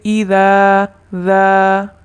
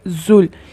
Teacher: ذال کو نرم اور زا اس کو سیٹی کی سی آواز پیدا کر کے پڑھنا ہے